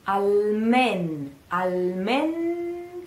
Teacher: this n that you can hardly hear but you have to say it